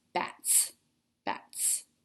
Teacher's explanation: S makes the S sound because T is unvoiced.